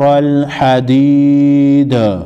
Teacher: وقف کی صورت میں دال ساکن کو ہلا کر پڑھیں گے